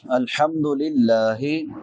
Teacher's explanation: लफ्ज़ अल्लाह बारीक होगा क्योंकि लफ्ज़ अल्लाह से पहले ज़ेर है। ज़बर हो पेश हो तो फिर पुर पड़ा जाता है, ज़ेर हो तो बारीक होता है।